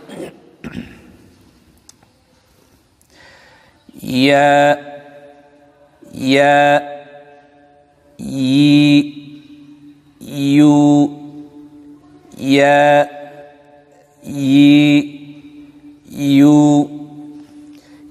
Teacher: জিহ্বার মধ্যখান, তার বরাবর উপরে তালুর সঙ্গে লাগাইয়া ইয়া হরফটি উচ্চারিত হয়।